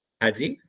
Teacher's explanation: किसी ने कहा, हमसे कहा ही is played really well, ठीक है, हमने कहा हैज ही, हमने ये कहा ना हैज ही को हम ज्यादा स्ट्रेस नहीं देंगे, ही तक तो आते हुए हमारी आवाज डाउन हो जानी चाहिए, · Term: फॉलिंग टोन